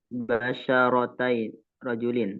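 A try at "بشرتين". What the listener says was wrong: Kurang tepat. Basyaratai ini aslinya basyaratain. Ada nun yang dihapus. Basyaratain. Musanna dia. Aslinya.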